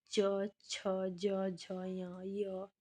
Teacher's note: इनका उच्चारण स्थान है तालु च वर्ग के वर्ण है इनका स्थान तालु है और इन्हें हम तालव्य वर्ण कहते हैं